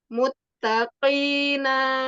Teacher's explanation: Pada huruf ta rendahkan suaranya, jangan isti'la, bukan mutta, mutta, ta ke depan.